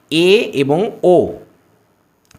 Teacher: উচ্চ মধ্য স্বরধ্বনির উদাহরণ হচ্ছে এ এবং ও